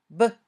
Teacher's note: P. When you say b, your vocal cords vibrate. It's a voiced sound.